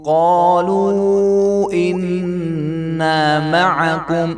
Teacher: قالو کا قاف بھی جو ہے یہ بھی موٹا ہی ادا کیا جائے گا ورنہ یہ بھی بریک قاف ہو جائے گا